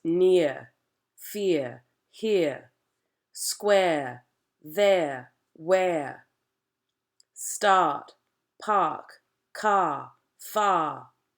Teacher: words like near, square, start, force, cure are all going to drop those R's. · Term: dropping R coloring